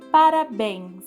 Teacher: O bens é a sílaba tônica. Porque é a sílaba mais forte.